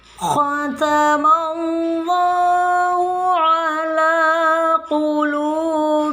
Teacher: bacaan lafzul jalalah, bacaannya adalah tafhim atau dibaca tebal, karena sebelum tulisan Allah ini mim bertanda fathah